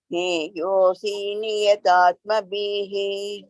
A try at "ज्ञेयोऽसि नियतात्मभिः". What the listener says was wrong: No, here both are raswa. That is in Tamil they call kuril.